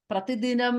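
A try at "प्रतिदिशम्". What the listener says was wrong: The third line, Prati Disham. I think you said Prati Dinam second time. Prati Disham.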